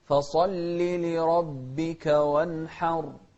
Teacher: شوف الصاد مفخمة واللام مرققة